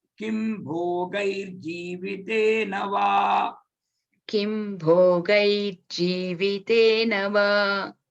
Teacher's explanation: The R sound is coming only because of Sandhi.